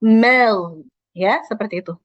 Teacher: Jadi ma-nya tipis, ghainnya tebal.